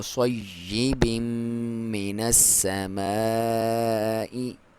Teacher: تو او کا صحیح بھی نہیں پڑھنا، او کا صیب من السماء، کاف کو باریک، صاد کو موٹا، یا پہ اپنے دباؤ کے ساتھ پڑھنا ہے کیونکہ اس پہ شد ہے